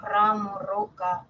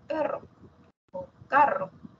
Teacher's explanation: La vibrante, que representa a veces la R cuando decimos ramo, roca, o la doble R cuando decimos perro o carro.